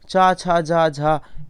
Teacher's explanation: चा छा जा झा, ये तालब्य हैं, ये तालु से बोली जाती हैं